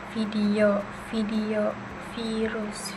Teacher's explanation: Selanjutnya ada V, bentuk bibirnya itu sama seperti F, tetapi pita suaranya itu bergetar